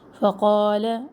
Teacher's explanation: اب فقال میں قا جو ہے الف مدہ ہے، تو فا اور لام کے زبر کو لمبا نہ کرے